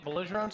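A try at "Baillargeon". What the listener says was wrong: I thought it was Vigeron. Vigeron. Vigeron. Vigeron. I don't think the L's are pronounced as L's. Vigeron.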